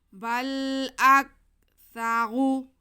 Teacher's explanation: آگے سا پہ زبر، را پہ پیش، را کو ہم پیش ہونے کی وجہ سے موٹا کر کے پڑھیں گے